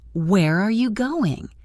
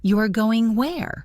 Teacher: Where are you going? Standard falling. You are going where? Surprised rising.